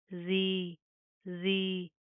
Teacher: زال کو نرمی سے ادا کریں گے، زا کی طرح آپ نے سیٹی پیدا نہیں کرنی، زبان باہی کی طرف آئے گی.